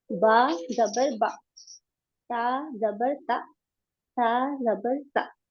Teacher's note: زبر کی آواز اوپر جاتی ہے اور اس کی معروف آواز ہے آ، اور مجہول آواز ہے اے.